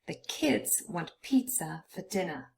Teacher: pizza and dinner both consist of two syllables, but only the first one is stressed, and so that's why half of the word is only in purple.